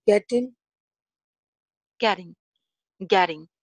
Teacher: Getting में जो t है, it's flap t sound.